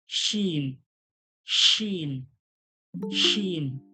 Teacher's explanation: জীবের মাঝখান ওর সোজাসুজির তালু থেকে হালকা চেপে বলবেন